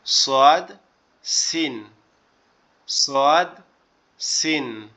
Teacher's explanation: জিহ্বার আগা নিচের দুই দাঁতের আগার সঙ্গে লাগে, লেগে উচ্চারিত হয় সোয়াদ, সিন, সোয়াদ, সিন।